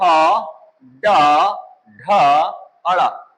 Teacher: जब हम इनका उच्चारण करते हैं तो जीभ गोल हो के ऊपर लग रही है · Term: मूर्धा